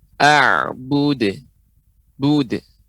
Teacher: qalqalah huruf dal ya. A'bud. Bud. Ya, tidak bud. Ya, tidak ada hamzah di ujungnya